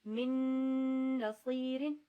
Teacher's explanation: اس کا جو غنہ ہے وہ بہت کلیئرلی ہوگا کیونکہ نون آ رہا ہے. جسے می یومن اور میو ولیشن میں تھوڑی سی آواز یا اور واو کی طرف کی تھی, مگر یہاں پر نون ہی ہے تو اس کو بہت کلیئرلی پڑھیں گے ہم.